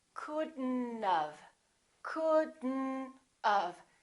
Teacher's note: We pronounce the D and then we connect the D next to the N, and then the O disappears, but the T also disappears. · Don't pronounce the O. Don't pronounce the T.